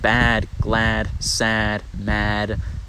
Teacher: bad glad sad mad typically adjectives for some reason get a long vowel